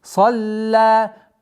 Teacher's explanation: При остановке аннулируется удлинение в размере 4 огласовки, остается 2.